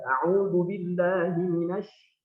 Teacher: angin yang dari dalam rongga mulut itu keluar deras. Dan dia keluar dari sela-sela gigi. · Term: tafasyi